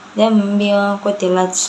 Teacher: Bi ayyi dzambi qutilat. Biaku itu ikhfa hakiki karena tanwin bertemu dengan huruf ikhfa yaitu qaf. Cara bacanya itu samar.